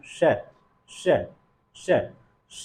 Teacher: जब उच्चारण कर रहे हैं तो जिह्वा कहां आ रही है, ताल को, इसलिए इसे तालव्य ध्वनि कहते हैं